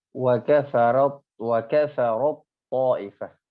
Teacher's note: kalau ta bertemu dengan to, maka langsung ke huruf to.